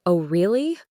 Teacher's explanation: Say, "Oh, really?" with rising intonation, and it sounds genuinely curious. Say, "Oh, really?" with falling intonation and a slower pace, and it sounds sarcastic or annoyed.